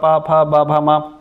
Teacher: प वर्ग आ जाएगा जिसमें आपका प भ म ये होठों को स्पर्श करते हैं। ये तीनों ही स्पर्श प्रकृति के हैं।